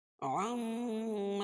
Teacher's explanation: میم مشدد میں غنہ ہوگا، ناک میں آواز کو لے جا کر پڑھیں گے